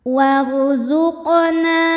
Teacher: Huruf qaf dihukumi dengan qalqalah sughra sebab qaf bersukun dan sukunnya ini sukun asli bawaan dari kalimah warzuqna ya, dan ada di tengah bacaan. Maka cara membunyikannya adalah dipantulkan qafnya ini dengan pantulan yang kecil. · cara membunyikannya adalah dipantulkan Kanya ini dengan pantulan yang kecil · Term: qqalah